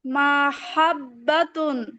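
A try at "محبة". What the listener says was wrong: মিমে টান হবে না আপু। মাহাব্বাতুন।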